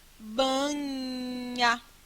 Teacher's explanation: nesse som aqui do NH, você tem uma língua bem no palato, que é o céu da boca